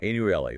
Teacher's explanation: 4 syllables. Stress on the first